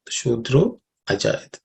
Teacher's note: The next part of the last section of the mantra, padbhyam shudraha ajayata. Shudraha, that visarga raha becomes ro, shudro, because of Sandhi.